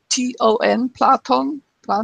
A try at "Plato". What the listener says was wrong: Well, in English, no N.